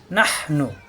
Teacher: নাহ এই নাম এলবে হায়ের সাথে। নাহ কণ্ঠনালীতে চাপ সৃষ্টি হবে।